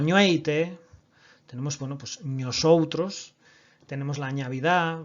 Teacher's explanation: la palatalización de la N inicial del latín